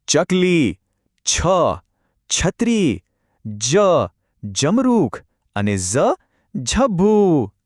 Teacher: આ અક્ષરો બોલતી વખતે જીભ તાળવાને અડશે.